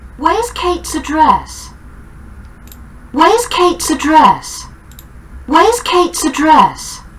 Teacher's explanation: a little schwa before dress and you say address